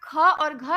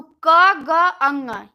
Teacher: तो क, ग, अंग ये तीनों अल्प प्राण है। इन तीनों की अपेक्षा ख और घ का उच्चारण करने में अधिक वायु की आवश्यकता होती है। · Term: महाप्राण व्यंजन